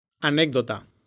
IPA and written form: aˈneɣ.ðo.ta (anécdota)